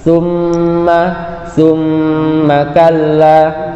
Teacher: Ada summa, itu summa ada huruf mim tasdid, huruf gunnah, maka suaranya keluar di hidung dan harus didengungkan